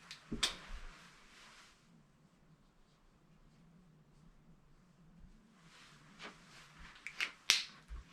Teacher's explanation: we change the first character from the third tone to the second tone